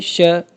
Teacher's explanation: sounds produced when the tongue blade, the part right behind the tip or body, touches the roof of the mouth or the hard palate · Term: पेलेटल्स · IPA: /ʃ/